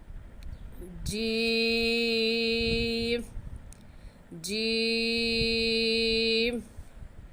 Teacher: 5 अलीफ के बराबर खींच कर पढ़ेंगे। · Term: मद